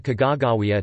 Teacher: it is advisable to emphasize the second, long syllable, not the last, as is common in English.